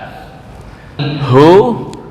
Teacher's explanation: Hu itu makhrajnya di sini dekat dengan dada. Tenggorokan paling bawah dekat dengan dada. Saya enggak tahu ini ujung atau pangkal yang penting dekat dengan dada.